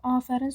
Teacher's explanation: Afərin sözündə sadəcə a uzanır.